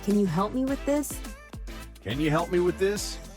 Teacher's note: can you becomes Canya · help me flows together like hel me